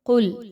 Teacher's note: قاف موٹا حرف ہے، حروف مستعلیہ میں سے ہے، پر پڑھا جائے گا